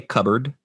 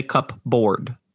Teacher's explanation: when I say cupboard, I just skip straight to the B sound. I do not say cupboard.